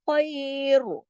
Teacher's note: را کے اوپر خیر، ہم نے آواز کو موٹا کر کے چھوڑنا ہے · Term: را موٹا